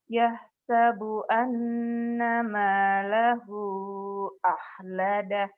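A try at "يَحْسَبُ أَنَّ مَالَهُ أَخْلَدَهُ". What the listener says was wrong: Ahnya kotor. Kho akhlada.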